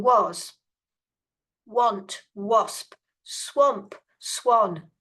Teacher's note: pronouncing that letter A not as a but as o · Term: sound o